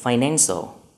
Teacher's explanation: Như vậy đáp án của chúng ta là đáp án A với dấu nhấn ở âm tiết thứ hai. Các đáp án còn lại có dấu nhấn ở âm tiết đầu tiên.